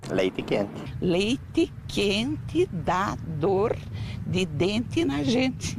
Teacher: São poucos os brasileiros que pronunciam o E, assim, bem falado, principalmente no final das palavras